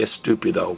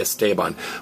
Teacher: Spanish doesn't like to start with a stressed or aspirated S. They add an E. We say stupid, they add an E and say estupido.